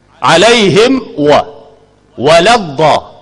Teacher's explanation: Mim dan waw ni makhraj dia dua bibir mulut. Cuma bezanya mim dirapatkan bibir mulut, waw tidak dirapatkan. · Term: izhar